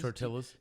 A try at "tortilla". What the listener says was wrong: Do you like go ahead and say, excuse me, sir, it's tortilla? You got to make the Y sound.